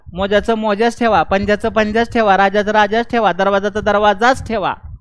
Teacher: मोजा असेल, मोज्याला जला ये लावू नका, मोजाचं मोजाच ठेवा, पंजाचं पंजाच ठेवा, राजाचं राजाच ठेवा, दरवाजाचा दरवाजाच ठेवा, कारण त्याचा उच्चारामध्ये य आहे रे, त्याचा उच्चार तालव्य आहे.